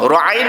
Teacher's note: kita sebut Ru'ain memang kita tekankan pada tengah kerongkong